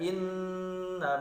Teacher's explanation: inna ghunnah musyaddadah, ya, harus ditahan 3 harakat.